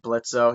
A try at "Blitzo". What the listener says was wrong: Remember, it's Blitz. The O is silent.